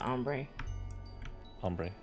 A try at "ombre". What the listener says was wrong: Now you're saying, when you do it like that, you're saying, man, hombre.